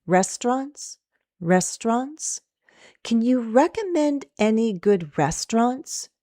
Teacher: Restaurants will be the focus, and that's where we'll go down. Restaurants has 2 syllables.